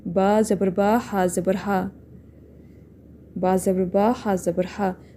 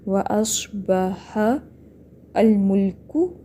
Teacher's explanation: کاف کی پیش لمبی نہیں کھینچنی، آخری حرکات اکثر لمبی ہو جاتی ہیں.